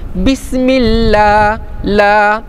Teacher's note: bismillah, la disebutkan tarqiq, dibaca nipis, bismillah, la.